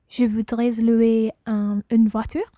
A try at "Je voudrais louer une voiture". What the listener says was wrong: Okay, in this one, you wouldn't pronounce the S of je voudrais because it's not followed by a vowel. So, je voudrais louer une voiture.